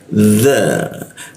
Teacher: ujung lidah digigit ya